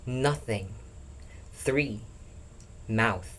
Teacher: a voiceless dental fricative soft sound. Blow air gently out across your tongue through the teeth. This is the sound in nothing.